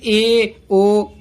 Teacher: अर्ध संवृत का मतलब होता है आधा बंद, और इसमें आते हैं ए ओ।